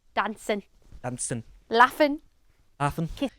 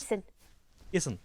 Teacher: The NG sound, in Geordie tends to become an N sound made with the front of the tongue high, n, instead of the back of the tongue high.